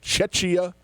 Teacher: It's a hard, the CH in the middle is actually a K sound